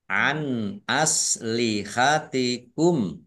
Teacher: nun sukun bertemu dengan huruf alif bacaan izhar dibaca jelas